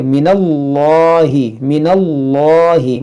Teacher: اس میں جلالت سے پہلے زبر ہے، اس کو موٹا کریں گے